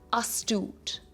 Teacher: a two syllable word with a stress on the second syllable